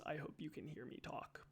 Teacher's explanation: And, um, it's called vocal fry, uh, sometimes, but, uh, the the like the funological term, as far as I'm aware, is creaky voice. So, you can be speaking, you can be speaking with creaky voice.